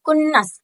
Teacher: ada huruf nun bertasjid, itu gunnah, dibacanya itu 2 harokat atau 1 alif